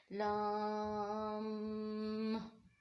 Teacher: इसी तरीके से लाम, लाम जो है जब ज़बान का किनारा कुछ हिस्सा हाफा और ऊपर नीचे के दांतों के मसूड़े, यानी कि ज़बान का किनारा और ऊपर नीचे के मसूड़े आपस में लगते हैं तो लाम अदा होता है।